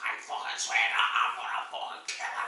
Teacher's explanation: sort of Mick Miller but more guttural, a bit more nasal